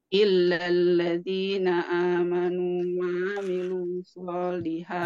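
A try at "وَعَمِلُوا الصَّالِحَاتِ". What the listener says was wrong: Nah, ini tidak perlu dipanjangin. Wa amilu, tidak perlu. Wa amilus, langsung saja. Wa amilus.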